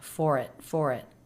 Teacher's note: For it. So that there's no break, which is what we want between all words in a thought group